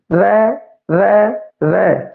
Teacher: ये दंत पठार है जिहड़ा उत्थे छू रहा है भाई, तो यह किस आवेगा, दंती च आवेगा भाई। जीभ है जिहड़ी दंदां नूं छो रही है हल्की जी